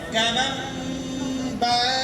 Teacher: نون کو چھپانا ہے تو کمن کو کمم کہیں گے, ہے نا. اور جب کمم کہیں گے تو اقلاب ہے, پھیریں گے تو اس میم کا غنہ ہوگا, اس کی آواز ناک میں جائے گی.